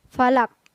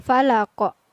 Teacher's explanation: Jadi ada pantulan pada huruf qaf di akhir ayat. Ini merupakan contoh qalqalah kubra.